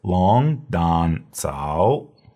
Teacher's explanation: When we have three third tones in a row, the first one becomes second tone.